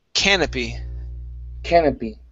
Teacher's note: The stress is at the very beginning.